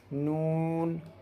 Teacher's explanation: سرا زبان تالو سے مل کر نون ادا ہوتا ہے۔